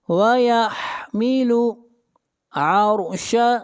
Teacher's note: را کو موٹا پڑھیں گے، را سے پہلے زبر ہے۔